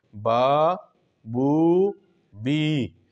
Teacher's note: इनका जो मखरज है वो है जोफ़े दहन, यानी मुंह का खाली हिस्सा, मुंह के खला से ये अदा होते हैं। और इनको हुरूफ़ हवाइया भी इसलिए कहते हैं कि जैसे हम अदा करते हैं मुंह से एक हवा सी निकल जाती है और ये अदा हो जाते हैं, जैसे बा अलिफ ज़बर बा, बा वाव पेश बू, बा या ज़ेर बी। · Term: हुरूफ़ मद्दा